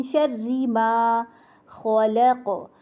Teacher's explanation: ख मोटा, लाम बारी, क़ाफ का कलकला मोटा, खल। इसको तोड़ तोड़ के पढ़ेंगे तो इंशाल्लाह ये खलक नहीं होगा, फिर इसको आसानी से पढ़ पाएंगे।